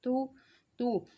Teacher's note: जैसे ता पेश तू तू, जब हम हरूफ को अदा करते हैं, उसकी पेश की अदायगी करते हैं, तो हमारे जो साइडों से होंठ होते हैं वो जुड़े होते हैं और दरमियान से हमारे जो होंठ हैं वो खुले होते हैं। इसका मतलब है ना तमाम, यानी कि कुछ होंठों का मिला हुआ हिस्सा और कुछ खुला हुआ।